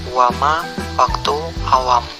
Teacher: konsonan W kriteria bunyi bilabial semivokal bersuara